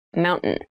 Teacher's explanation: when you pronounce this word in fast speech it sounds like mountain the t sound is reduced